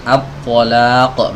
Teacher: kalau diubah jadi tebal at-talaq, maka berubah jadi huruf to, meskipun makhrajnya tidak berubah